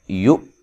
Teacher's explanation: حمزہ کو جھٹکے سے ادا کریں